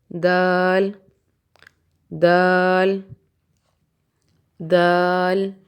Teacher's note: آپ اپنے زبان کی نوک کو سامنے والے اوپر کے دانتوں کی جڑ سے لگائیں اور پھر ہونٹوں کو کناروں کی طرف سے کھولتے ہوئے دال ادا کریں. جیسے دال دال دال.